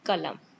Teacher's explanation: Then cough, ka, ka sound, and this is go, and this is in, like a sound. This is ka is stopped, voiceless, unaspirated.